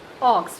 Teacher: That is a back rounded short vowel. O, as you can see the shape of my lips here, when I am articulating this particular vowel sound, my lips are rounded.